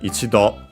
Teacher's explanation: ichido, accent on the last syllable